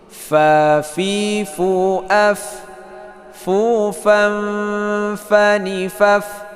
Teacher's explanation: Jadi kaidahnya takhruju min atrafi saniyan lil ulya ma'a batil syafatin sufla, ya. Ujung gigi seri atas menyentuh perut bibir bagian bawah.